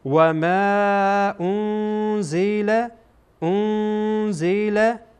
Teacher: منفصله [موسیقی] وز مثل این انزله خوانده میشه و بعد از بعد از نون ساکن ز آمده و زا از حروف اخفا هست اخفا میشه